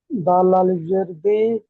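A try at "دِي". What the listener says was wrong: এখানে আলিফ আছে, দালের পরে দেখেন, দালের পরে আলিফ কি আছে? ইয়া আছে, ইয়া। দাল ইয়া, দাল ইয়া জের দি।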